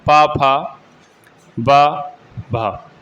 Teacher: तो ओष्ठ जो वर्ग है जो उसमें प फ ब भ और म बोले जाते हैं।